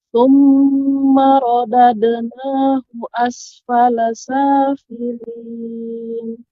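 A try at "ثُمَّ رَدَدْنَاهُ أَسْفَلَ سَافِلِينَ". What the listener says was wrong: Iya, demikian.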